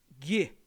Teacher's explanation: quando você fala Gu que você tá usando o palato